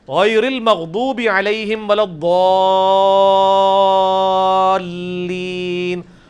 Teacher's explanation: ولضالین میں جو الف کے اوپر بڑی والی مد ہے وہ 5 الف تک کھینچی جاتی ہے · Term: مد واجب